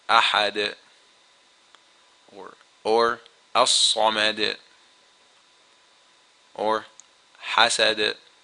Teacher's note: the pronunciation of the qalqalah is a little stronger than when the letter of qalqalah is in the middle of the word